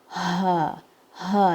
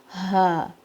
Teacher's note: Ha, it makes the sound like you're taking a deep breath, like you're inhaling, ha, like you're tired and you're making a sound like this, ha.